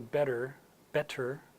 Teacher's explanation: when T happens at the middle you know the middle of a word that's not aspirated so better better and British English is not aspirated the same